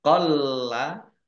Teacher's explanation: lamnya dibaca double, ada tasdidnya, ya, ditekan biar tampak doublenya.